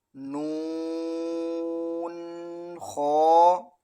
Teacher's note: نون کو 5 الف کے برابر کھینچنا ہے اور خا کو 1 الف کے برابر